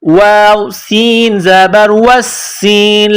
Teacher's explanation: سین میں سیٹی کی آواز پیدا کرنی ہے